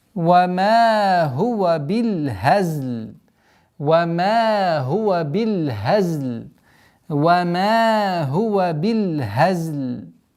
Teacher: وَمَا هُوَ بِالْ, с фатхи уходим на лям, с касры, ба, прошу прощения, бил хазл. Аннулируется кесра над лям, уходит в сукун при остановке, и таким образом وَمَا هُوَ بِالْهَزْلِ.